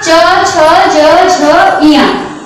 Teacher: जब हमारा जीभ तालु को छूते हुए निकलता है तो हम इसको तालव्य कहते हैं